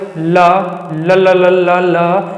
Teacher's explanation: ल बोले, ल ल ल ल ल ल, क्या हुआ आपको, क्या हुआ, थोड़ा सा आपके आसपास से हवा निकल रही महसूस हो रही है या नहीं हो रही। जो आपके बगल से हवा निकलती है उसे हम क्या बोल सकते हैं, पार्श्विक बोलते हैं